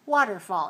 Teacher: waterfall three syllables stress on the first